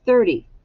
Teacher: we often make the T sound in there sound like a d but it's really a t